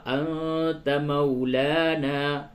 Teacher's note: نون ساکن کے بعد تا ہے، یہاں پہ اخفا ہوگا